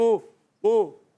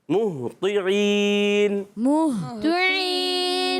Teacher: ہا ادا ہوتا ہے حلق کے نیچے والے حصے سے، اور طا کے نیچے زیر ہے.